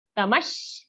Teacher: We are giving a dvitva or double sh sound.